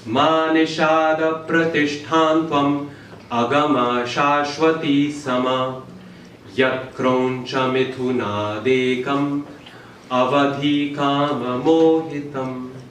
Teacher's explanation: 8 syllables per line, 32 syllables total, in exactly the same pattern of Laghu and Guru, of long and short syllables. This creates meter, it creates a verse, it creates a pattern, and that pattern was the first time it was used was with this verse from the Ramayana.